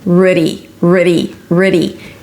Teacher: s'k-Y'R-ud-dee. And then you reduce it to a schwa sound, a flap T so it sounds like a D, and an E sound at the end